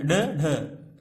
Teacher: इसके अलावा ड, ढ, ड, ढ ये जो हैं ये आपके उच्छित्त के अंतर्गत आते हैं। उच्छित्त मतलब जहां पर हमारी जीभ उछल करके छत को छूती है और फिर से नीचे आ जाती है